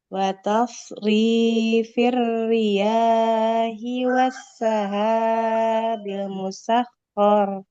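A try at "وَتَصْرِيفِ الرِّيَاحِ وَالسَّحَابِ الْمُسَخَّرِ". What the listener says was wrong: Oke, huruf ya-nya jangan terlalu panjang ya. Wa tasrifir riyahi wassahabil musakhkhari bainas sama. Enggak boleh panjang.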